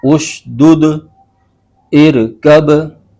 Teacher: حروف قلقلہ میں قلقلہ ہوگا، یعنی مخرج میں جنبش سی ہوگی جس کی وجہ سے آواز لوٹتی ہوئی نکلتی ہے